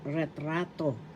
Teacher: ret rato first syllable ret second syllable ra third syllable to the accent is in the second syllable